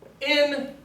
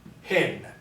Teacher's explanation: I know to pronounce the top one as in because it has a smooth or unaspirated diacritical, and the bottom one is hin.